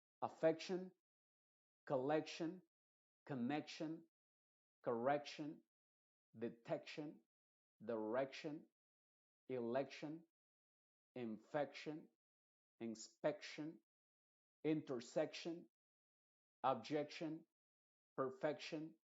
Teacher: entonces siempre el énfasis va a estar en esa e y esa e escrita siempre se va a pronunciar como una e eh tal cual en español · n inmediatamente pero lo importante acá es que esa e de action siempre se va a pronunciar como e y va a ser la que lleva la fuerza